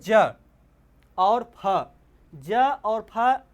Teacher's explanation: ज और फ ऐसे शब्द हैं जिनके बोलने में वायु विशेष स्थान से घर्षण करते हुए निकलती है।